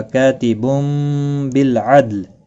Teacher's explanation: دال ساکن پر قلقلہ ہوگا، لام ساکن پڑھا جائے گا وقف کی صورت میں۔ · تنوین کے بعد متحرک با ہے، یہاں پر قلب ہوگا۔ چھوٹا سا میم کتنی آپ دیکھ رہے ہیں، اخفا شفوی ہوگا۔